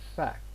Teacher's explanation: Normally, there is this tendency to pronounce it as fac, which means that there is this omission of the last consonant.